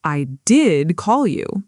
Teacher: Notice how did here carries strong stress in spoken English too, emphasizing the truth of the action against the doubt.